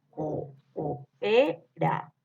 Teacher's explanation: estas son las dos O y van separadas en diferentes sílabas. Coopera es la forma. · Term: hiato